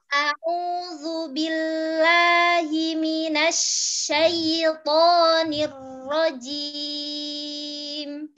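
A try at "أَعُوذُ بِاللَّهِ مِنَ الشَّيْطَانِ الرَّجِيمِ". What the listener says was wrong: Oh, bukan lagi syaithanir rajim. Terus lamnya jangan dilepas billah. Nyambung billah tapi turun ya.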